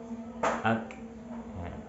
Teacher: kaf sifat hamsnya akan lebih terlihat jelas ketika sukun. Adapun ketika berharokat mungkin jelasnya akan lebih sedikit dibanding ketika sukun.